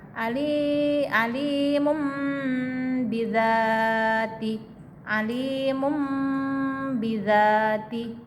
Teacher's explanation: Tanwin ketemu ba, Alimum, jangan alimun, tapi alimum bidzati, disamarkan kemudian didengungkan. Iqlab namanya.